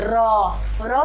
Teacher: जीभ ऊपर गई और पीछे फोल्ड हो गई। प्रकंपित यानी कि जब पे हमारा वाइब्रेशन होता है, इसका अर्थ यानी कि कांपता हुआ।